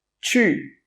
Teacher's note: Your tongue must be touching the top of your mouth and then you say the SH, the SH sound.